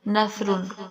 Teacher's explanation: سا سین کی طرح نہیں پڑھیں گے، سا نرم پڑھیں گے، زبان کی نوک اور ثنایا علیہ کے دو جو سرے ہیں ان کے ساتھ جب زبان لگے گی تو سا ادا ہوگی